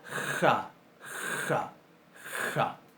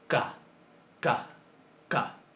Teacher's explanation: Es una de esas letras que cuando le ponemos un puntito dentro, que se llama Dagesh, va a alternar su pronunciación entre fricativa y oclusiva